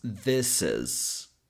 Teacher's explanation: Usually when we have a word that ends in a consonant sound and the next word begins with a vowel sound, it's almost like we can bring the consonant to the next word to connect them.